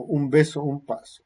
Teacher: Si la consonante que viene después es bilabial, la nasal se articula como bilabial nasal sonora